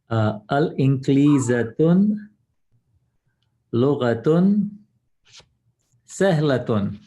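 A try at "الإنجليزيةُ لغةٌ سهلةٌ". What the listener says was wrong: Except for Al-Inkiliziya has to have only one dhamma at the end of it. Al-Inkiliziya 2.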